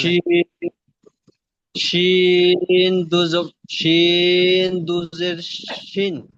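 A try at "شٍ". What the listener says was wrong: মাশাআল্লাহ, সুন্দর।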